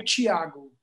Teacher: with my accent, you know, in this part of Brazil, the T-I would make a chi sound.